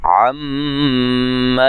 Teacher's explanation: मीम मुशद्दद पे गुन्ना ज़रूरी है और ज़बर है, ज़बर ज़ेर पेश को लंबा नहीं करना।